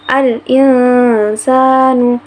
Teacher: Ada huruf nun sukun bertemu dengan huruf sin, maka harus dibaca samar. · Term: ikhfa wusto